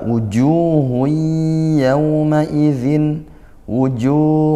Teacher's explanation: mad tabi'i, panjangnya satu alif atau dua harokat karena dhammah diikuti wa sukun